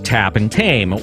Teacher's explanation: In English, T usually denotes the voiceless alveolar plosive